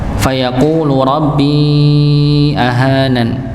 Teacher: di sini fayaqulu ku panjang 2 harakat, ya, dhammah, waw sukun sebelumnya bertemu dengan dhammah.